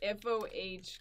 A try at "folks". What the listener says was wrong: It's folks. There's an L.